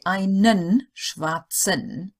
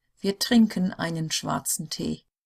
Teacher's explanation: if the E is in the final EN of a word, it doesn't get pronounced, or hardly really. So we've got here, I say it properly, einen schwarzen. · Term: hardly hear the E